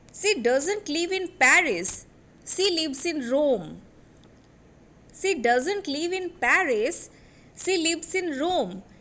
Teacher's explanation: I am putting stress on the name of the place, that is Paris and Rome